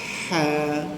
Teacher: ha daripada halkum keluar angin